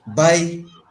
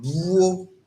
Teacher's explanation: Whenever you have a consonant sound and you add W to it, for example, by is BAI, but buo, BWOUO. You see that W is added to B, and then your mouth or your lips have to switch a bit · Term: labialized consonant sounds